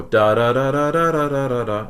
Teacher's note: Da is a lower pitch, then da is a higher pitch. So the frequency of da is a higher frequency than da, which means that the sound waves are oscillating less at the lower note than they are at the higher note.